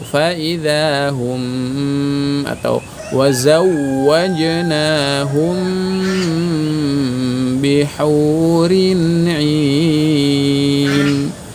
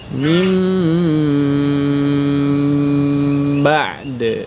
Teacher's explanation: Mim mati saat bertemu ba, baik mim asli maupun mim hasil perubahan dari nun mati atau tanwin, itu panjangan dulu.